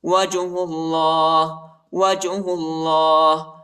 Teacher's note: ہا کو لام کے ساتھ ملائیں گے اور اللہ کے نام کو جو ہے موٹا پڑھیں گے